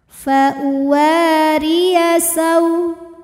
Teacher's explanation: Huruf ra dibunyikan secara tarqiq sebab berbaris kasrah, maka dibaca tipis.